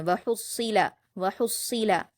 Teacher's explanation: صاد پر تشدید ہا کو صاد سے ملائیں گے اور صاد کو پر پڑھیں گے، سخت پڑھیں گے